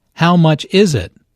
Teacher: notice that the main sentence stress falls on is in this question